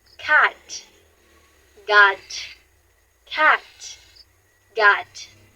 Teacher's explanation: Notice how your throat buzzes for G but not for K.